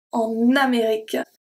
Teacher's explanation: So the N is going to be transferred to Amérique. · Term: we link